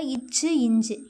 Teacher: இச்சு இஞ்சு நாவின் இடைப்பகுதி நடு அன்னத்தின் இடைப்பகுதியை பொருந்துவதால் பிறக்கின்றன